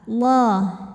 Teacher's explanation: Lam pada lafaz Allah dibunyikan secara tafkhim karena huruf sebelumnya berbaris fathah, maka dibacanya tebal.